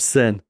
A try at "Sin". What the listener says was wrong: Sin is actually you should pronounce it seen. Seen.